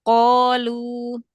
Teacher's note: tebalkan lagi qaf karena dia fathah setelahnya alif tingkatan paling tebal.